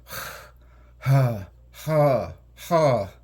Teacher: this letter, which is also like an H, is almost down in the throat, in the glottal area, and it's more like a heavy breathing sound. It's ha, ha, ha. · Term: voiceless glottal